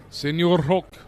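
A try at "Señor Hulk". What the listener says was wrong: Got to roll your Rs.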